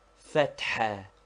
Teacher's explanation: Fatha, to be pronounced with a roughly aspirated ha, which we have indicated by a dot under it, and which is somewhat like HH or doubly strong H.